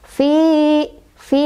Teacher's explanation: Sebabnya karena ada ya sukun didahului oleh huruf berbaris kasrah, yaitu di huruf fa. Cara bacanya panjang dua harokat. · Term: mad thobii